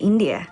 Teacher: She uses a rising intonation to express the afterthought, India.